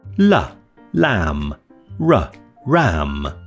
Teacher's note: The L and R sounds are approximants, which come somewhere between the vowels and fricatives in the amount of turbulence they cause to the airflow. The L and the R sounds on the chart are shown in green, which means they're voiced.